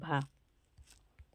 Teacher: महा स्पर्श व्यंजन भी है, आपका घोष भी है, महाप्राण भी है, ओष्ठ व्यंजन ध्वनि है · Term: स्पर्श घोष महाप्राण ओष्ठ व्यंजन